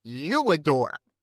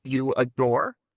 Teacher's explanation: we'd put a W glide in